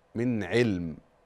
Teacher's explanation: ما ينفعش تقفي على علم بالتنوين لا قفي بالسكون